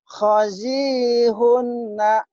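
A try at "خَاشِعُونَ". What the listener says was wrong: Khoshi'una. Unya panjang tuh kan?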